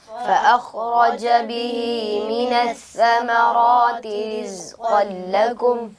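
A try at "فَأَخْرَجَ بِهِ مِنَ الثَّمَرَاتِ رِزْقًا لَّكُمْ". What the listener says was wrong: बेटा आपकी खौ की अदायगी में कलकला हो रहा है। खौ को जब अदा करें उसमें कलकला नहीं होना चाहिए, आवाज़ अपने मखरज में दोबारा लौट कर ना आए। फ़अख़रज नहीं, फ़अख़रज बिहि मिनस्समराति रिज़क़न लकुम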